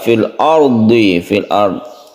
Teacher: Ada ro sukun, sebelumnya ada fathah, kita baca tebal atau tafkhim.